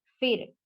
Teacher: یہاں پر حرف را ساکن ہے لیکن اس سے پہلے والے حرف کے نیچے زیر آیا ہے، اسے ہمیں پتلا پڑھنا ہے